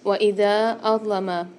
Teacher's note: دال کے ساتھ الف مدہ بھی آ رہا ہے اور مد بھی آ رہا ہے چھوٹا والا تو اس کو ہم 3 سے 4 الف کی مدار کھینچ کے پڑھیں گے